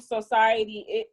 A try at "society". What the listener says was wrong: She enunciate the O in it. Well, it's derived from the word social.